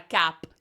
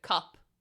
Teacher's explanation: So Spanish speakers, they say 'ah' instead of 'uh', so instead of saying like, Oh, I want a cup, they'll say, I want a 'cap'.